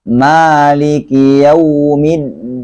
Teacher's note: Di sini kalau riwayat Hafs itu mimnya dibaca panjang, nggak boleh dibaca Maliki Yaumiddin. Riwayat Hafs itu bacaan mimnya panjang. Jadi kalau membaca riwayat Hafs dengan mimnya pendek, berarti bacaannya salah, otomatis salah, dan sudah beda riwayat yang ia baca.